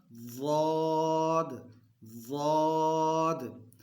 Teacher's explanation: ہماری جو زبان کی کروٹ ہے یہ داڑھوں کے ساتھ لگے گی تو یہ ادا ہوگا